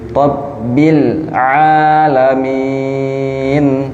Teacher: min panjang dan nun di akhirnya dia ada ghunah